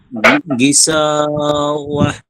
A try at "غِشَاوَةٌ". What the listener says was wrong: এই যে এটা সিন বলা যাবে না, শিন শিন গিশাওয়া